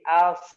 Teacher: di kepala lidah ya menurun atau menempel ke gusi gigi seri bawah, sehingga apa? Suaranya mengalir di antara gigi.